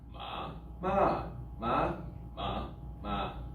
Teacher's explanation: They have a low tone, a high tone, a falling tone, a rising tone, and a medial tone.